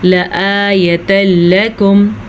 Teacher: تنوین کے بعد لام آیا ہوا ہے تو ان دونوں کو ہم نے آپس میں ملانا ہے. شد ملانے کا کام کرے گی، ادا کرنے کا کام آپ نے کرنا ہے، بغیر غننے کے ادا کرنا ہے، رکے بغیر. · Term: ادغام بلا غنہ